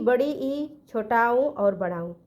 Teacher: फिर देखा कि समवृंत स्वर, जिनके उच्चारण में मुंह लगभग बंद रहता है